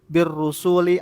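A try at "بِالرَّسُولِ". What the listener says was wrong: Kalau rusuli wawunya enggak ada, jadi jamak rusuli.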